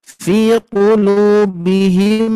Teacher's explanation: mim bertemu mim, gunah bertemu gunah, maka terjadilah dengungan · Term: idgham mimi